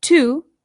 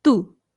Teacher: The T in Spanish is much like the D. It's softer than it is in English. So this is not to, it's to, which again, you can make the softer T by bringing your tongue right up behind your teeth instead of through your teeth.